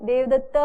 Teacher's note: दूर से बोलते हैं तो ऐसे बोलते हैं ना जोर से, देवदत्ता, वो अंत में जो है वो प्लुत हो जाता है